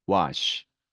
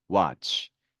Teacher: A 앞에 W가 오면 이 A의 음가는 아 발음이 납니다